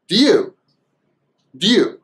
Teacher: The short way is do. So we just cut off the oo sound of do and we have the d sound, and we just combine the d, the d, with you.